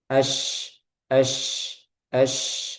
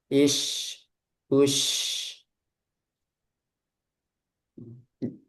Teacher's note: Kalau jim tadi kan jahar, udaranya tertahan. Kalau shin, dia udaranya mengalir. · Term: huruf shin